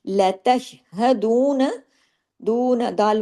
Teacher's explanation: यहां पे वाऊ मद्दा है। दो हरकात खींचेगा।